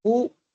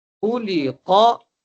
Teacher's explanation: خا اور قاف کو موٹا کریں گے. خا بھی حروف مستعلیہ میں سے، قاف بھی حروف مستعلیہ میں سے.